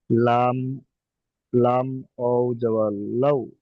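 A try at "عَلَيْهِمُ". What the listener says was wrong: লাম ওয়াও আছে কি দেখেন এখানে। হ্যাঁ, আলাই। হাজের হি। মিম লাম পেশ। আলাই হিমুল।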